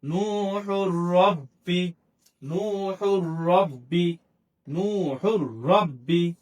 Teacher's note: তাহলে তানবিনের বামে ইদগামে বেলা গুন্না হরফ র আসছে, রকে তাসদীদ দিয়ে গুন্না ছাড়া পড়ছি।